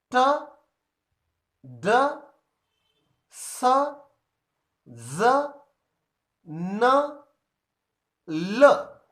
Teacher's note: The blade of the tongue or the tip of the tongue touches the alveolar ridge. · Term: alveolar sounds